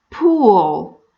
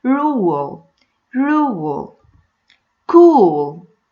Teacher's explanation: If I find before the dark L sound long U sound, it's not long E sound, this time it's long U sound. I insert W sound between the long U sound and the dark L.